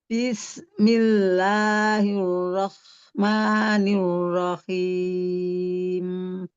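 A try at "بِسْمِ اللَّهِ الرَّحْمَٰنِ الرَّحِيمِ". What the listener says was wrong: Nah tadi tuh di tegas. Bismi, coba Bunda. Bismi. Iya, dialirkan rokowahnya, huruf sinnya, suaranya dipanjangkan. Bismillah. Tetapi kita coba lagi ya, dialirkan dengan lembut aja ya Bunda, supaya jangan terlalu desak-desak. Bis, dialirkan. Bismillahirrahmanirrahim.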